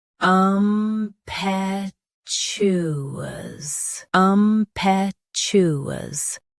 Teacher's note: Both US and UK have the same pronunciation of this word. Stress pe. Keep chew smooth, not shoo.